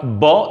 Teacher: we feel that vibration in our vocal cords